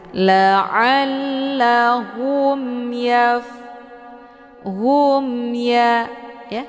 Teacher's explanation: Cara bacanya, mimnya dibunyikan secara jelas atau jelas bunyi m-nya. Cukup ditekan saja, tidak perlu ditahan. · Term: idhar syafawi